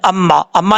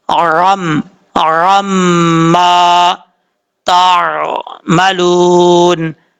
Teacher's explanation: عین کا آپ نے خاص خیال رکھنا ہے، عین کو حمزہ کی آواز نہیں پڑھنی